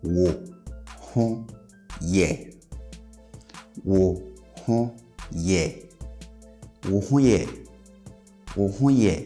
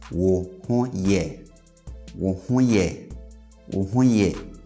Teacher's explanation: pay attention to how I raise the last syllable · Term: statement question